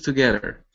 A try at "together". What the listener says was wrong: Okay, give me a good th instead of together. Together. So your tongue needs to be between your teeth. Instead of together, it's there.